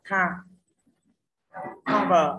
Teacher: Cover dễ quá, đuôi er phát âm là er, không nhận trọng âm thì trọng âm rơi tiết thứ nhất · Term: âm tiết thứ nhất